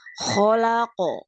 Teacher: Jadi pantulannya tidak boleh ada pantulan hamzah di ujungnya dan tidak boleh ditahan lebih lama, dilepas terlalu cepat sehingga tidak terdengar pantulannya. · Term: qalqalah kubro